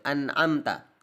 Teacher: memberikan jeda antara nun sakinah dan tanwin dengan huruf berikutnya